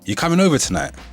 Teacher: there's an inflection on the tonight which suggests that this is a question instead of a statement